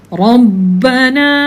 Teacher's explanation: Bila ada ba musyaddadah menunjukkan ada dua ba. Lepas tu daripada huruf ra nak masuk pada huruf ba tu, kakak jangan bawa suara huruf P